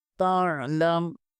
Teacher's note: عین ادا کریں گے، تا نہیں پڑھیں گے، حمزہ نہیں پڑھیں گے